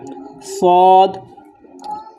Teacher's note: দুই দাঁতে লাগানোর পরে সামান্য মধ্যখানে একটু ফাঁক রাখবেন, যাতে সোয়াদের আওয়াজটা বাঁশির মতো আওয়াজ হয়, চড়ুই পাখির মতো আওয়াজ হয়।